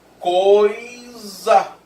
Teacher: Nesse caso eu tenho um ditongo decrescente, que é vogal mais semivogal.